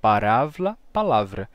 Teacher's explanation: o r e o l trocam lugar